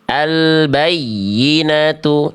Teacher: Nada ya tasydidnya seolah lebih menonjol dibanding sekitarnya karena ada penekanan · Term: naber